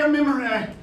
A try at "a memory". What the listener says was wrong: A memory? And did you say a memory? Oh, it sounded like you sort of alighted the last syllable there.